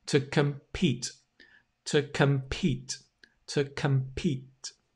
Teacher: The com, the C-O-M, this bit, if I can get it, becomes come, come. It's not com, it's come. It's the reduced schwa sound. And the stress falls on Pete. That's why it has the schwa, the com.